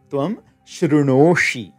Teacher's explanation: you trigger your s sandhi rule so that the dental sa becomes a retroflex sha